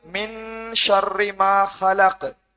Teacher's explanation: மின் சுக்குன் செய்யப்பட்ட நூனை தொடர்ந்து ஷீன் வந்தி. எனவே குன்னா செய்து நாங்கள் 2 ஹரக்கத் அளவுக்கு நீட்டணும்.